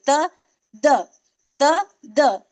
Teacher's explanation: जुबान की नोक से तो निकल रहा है लेकिन वो जो ऊपर के दांत है उसकी जड़ में लग रही है